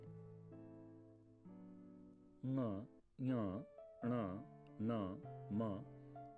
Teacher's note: ङ, ञ, ण, न, म नासिका के स्पर्श से निकलने वाली ध्वनियां हैं। इनको अनुनासिक कहते हैं।